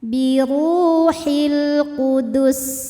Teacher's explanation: lam qamariah sebab alif lam menghadapi huruf qamariah yaitu Q maka lam sukun dibunyikan dengan jelas atau biasa dinamakan denganzhar